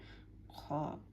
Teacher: খটা হচ্ছে আমার একদম জিহ্বার পিছনে এবং গলার উপরে, মানে এরকম একটা জায়গা থেকে খয়ের উচ্চারণটা হবে।